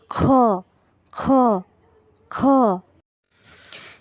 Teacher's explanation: এবারে আমরা যে হরফটিকে দেখতে পাচ্ছি এটা হলো খ, এটা হলো খ। খ এর উচ্চারণটা হবে হলকের শেষ ভাগ হতে। আমরা এখানে এই ছবিটাতে দেখতে পাচ্ছি ঠিক এই জায়গাটি থেকে এটা হলো হলকের শেষ ভাগ, এখান থেকেই উচ্চারিত হবে খ, খ, খ।